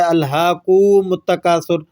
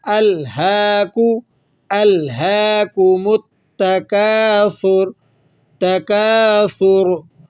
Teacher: کاف کی پیش کو لمبا کر دیا جاتا ہے، جس سے ایک نیا لفظ، ایک نیا ورڈ پیدا ہو جاتا ہے، الہاکوم التکاثر۔